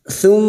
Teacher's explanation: mim yang bertasdid gunah musyaddadah kita dengungkan selama tiga harakat